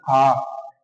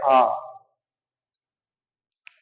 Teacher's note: हमारा मुख होता है वो पूर्ण रूप से पूरा खुल जाता है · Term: विवत स्वर